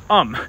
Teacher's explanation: the British accent is non-rhotic, which means you don't pronounce the R sound coming after vowels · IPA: /ɜːm/